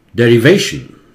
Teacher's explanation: sound होता है, उसे सिलेबल बोलते हैं, डेरिवेशन, चार सिलेबल है, शन के आगे वाला सिलेबल जोर से होता है